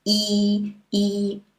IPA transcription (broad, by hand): iː